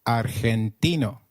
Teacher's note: In Spanish, G, when followed by E or I, is pronounced like a throaty H.